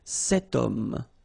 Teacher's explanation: H is not pronounced, okay? So you've got the sound of O at the beginning of this word